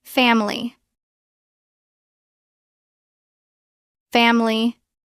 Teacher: We often drop the middle I. It becomes family. 2 syllables.